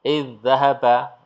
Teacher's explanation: Idzahaba, ya, langsung danya masuk ke sini, masuk ke tasdidnya, da yang sukun seolah-olah tidak ada